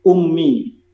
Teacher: gunah itu terdapat atau terjadi ketika membaca mim tasdid. Satu, mim tasdid diwakili oleh contoh ummi.